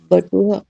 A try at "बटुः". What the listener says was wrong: नहीं, बटुहा नहीं, बटुह।